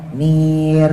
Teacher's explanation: Tapi kalau jatuhnya setelah kasroh, nir, nah itu bacanya merenges, tarkib.